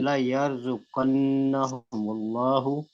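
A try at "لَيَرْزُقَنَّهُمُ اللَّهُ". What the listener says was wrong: ला नहीं है ना।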